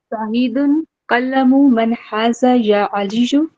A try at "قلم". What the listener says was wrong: قلم، ٹھیک ہے، قلم نہیں ہے، تشدید نہیں لگانا. ٹھیک ہے، قلم من حاذا یا علی.